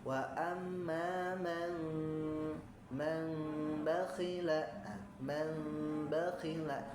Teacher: menyamarkan bunyi mim dengan cara menenggangkan bibir gitu ya. Wa amma man bakhila, man bakhila, tidak terlalu rapat ya. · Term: Iqlab